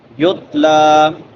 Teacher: لام کے اوپر کھڑی زبر ہے، اس کو ایک الف کے برابر لمبا کریں گے